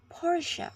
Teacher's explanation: pronounced Porche on both sides of the Atlantic with the stress on the first syllable